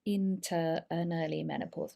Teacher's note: lots of weak Sounds here that schwa sound all gets linked together